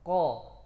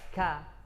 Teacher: aqsal lisan pangkal lidah paling ujung ditempel ke al-hanak al-lahmi. Itu ke anak tekak itu. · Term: makhraj qaf